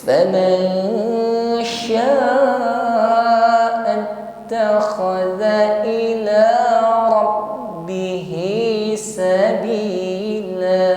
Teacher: Faman, ketika mengucapkan nun sukun kita samarkan pada huruf yang ada di depannya, yaitu huruf shin ya, ikhfa namanya. Jadi ketika menyamarkan bunyi nun sukun pada huruf shin ada suara dengung.